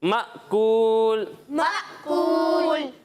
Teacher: ساکن۔ ساکن، یعنی اسے ہم مأکولن نہیں پڑھیں گے بلکہ پڑھیں گے مأکول۔